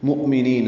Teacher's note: حمزہ ساکن جھٹکے سے ادا ہوگا